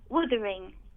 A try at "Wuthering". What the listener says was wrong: Did you say Withering? But it's pronounced. It's not pronounced Withering. It's Wuthering, though.